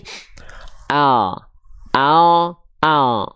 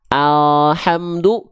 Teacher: huruf L kita kalau kita lafalkan cuma hanya menyentuhkan bagian ujung akhir lidah saja ini ke langit-langit di atasnya langit-langit depan di atasnya sini contoh pelafalannya adalah seperti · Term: l alfabet